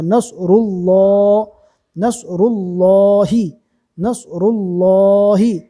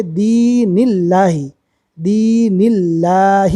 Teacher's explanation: اللہ کے لام سے پہلے زیر ہے اس لیے اللہ کا لام باریک ہوگا